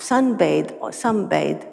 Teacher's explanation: the N can be pronounced with n or M